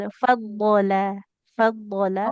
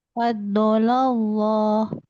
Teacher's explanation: Nah, hati-hati di lam yang di tengah-tengah ini jangan fadbolollah. Lamnya nggak ikut tebal.